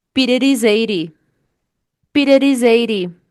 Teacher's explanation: Aí você vai juntar o S do is com a letra E de 80, vai ficar is 80. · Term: connected speech